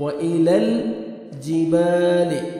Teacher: با الف مدہ, با کو ہم نے 1 سیکنڈ کھینچنا ہے